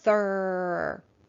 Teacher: digraph th is going to be making its unvoiced sound